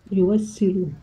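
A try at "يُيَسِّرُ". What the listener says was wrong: Yuyassiru. Yuyas bukan yuwas.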